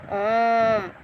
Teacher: मिश्र विकृत स्वर दीर्घ होते हैं और यदि 3 मात्रा का समय लगे तो प्रलुप्त जैसे ओम